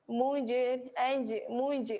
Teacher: Yang ini qalqalah sugra, lantunan yang perlahan. Lantunan yang kecil.